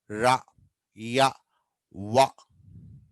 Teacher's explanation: రా, యా, వా పూర్తిగా టచ్ కావు, కొద్దిగా దగ్గరకు వస్తాయి. ఫర్ ఎగ్జాంపుల్ చూడండి, వా ఇది మనకు బాగా కనిపిస్తుంది. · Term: అప్రాక్సిమెంట్స్